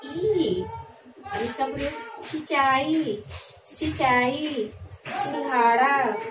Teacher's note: ई के ऊपर जब अनुनासिक लगा हुआ है तो हम मुख और नाक से ध्वनि निकालेंगे